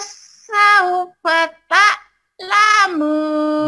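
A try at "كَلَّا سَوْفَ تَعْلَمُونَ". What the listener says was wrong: bagus, cuma tinggal ainnya.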